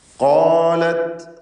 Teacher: ഖാലത്ത് നേരത്തെ പറഞ്ഞ അതേ അവസ്ഥ തന്നെ ഖാഫിനും അലിഫിനും തഫ്ഖീം കൊടുക്കുക, തടിപ്പിച്ച് പറയുക.